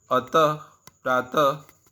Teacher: इस ध्वनि का उच्चारण ह की भांति होता है। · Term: विसर्ग